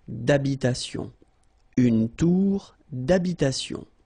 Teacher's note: H doesn't exist in French, well, in most of the cases, so it does mean that you don't pronounce it